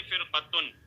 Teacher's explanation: اس میں را ساکن ہے، را ساکن سے پہلے کسرہ ہے، لیکن اسی کلمے میں حروف مستعلیہ کا قاف ہے، تو اس لیے یہ را بھی جو ہے پر ہوگی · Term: را پر